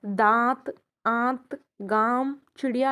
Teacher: अनुनासिक में नाक से बहुत कम सांस निकलती है और मुख से ज़्यादा निकलती है